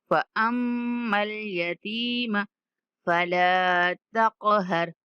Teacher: فأما اليتيم میم مشدد غنہ کریں گے۔